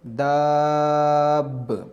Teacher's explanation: پہلے دال کو لمبا کریں گے پھر دال کو با کے ساتھ ملائیں گے۔ اس کو دب نہیں پڑھیں گے اور دا با بھی نہیں پڑھیں گے، دا با بھی نہیں پڑھیں گے، دب با بھی نہیں پڑھیں گے۔